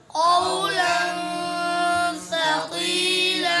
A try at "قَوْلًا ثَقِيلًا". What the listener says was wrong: یہ بھائی سے غلطی ہوئی بھائی نے سقی یا کو زیادہ لمحہ کر دی قولا ثقیلا